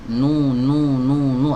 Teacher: huruf nun itu melekat ghunnah padanya secara permanen